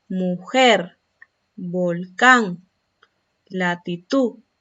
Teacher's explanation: Son agudas porque presentan el acento en la última sílaba.